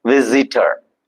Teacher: It's not s sound, is z sound.